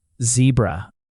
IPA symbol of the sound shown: z